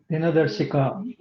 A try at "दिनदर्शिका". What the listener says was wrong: देखिए दिन दर्शिका जिन्होंने बोला वो गलत है, वो दिन जो होता है वो आधा ना हो जाता है, तो इसलिए दिना दर्शिका आप की ध्वनि